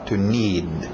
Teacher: Engole aquele D no final.